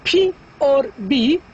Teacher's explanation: two sounds, the P and the B, which are bilabial